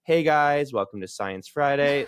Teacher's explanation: the uptalk keeps you hanging on every word wondering what's coming next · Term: lifestyle influencer accent